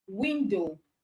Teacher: the stress on window is on wi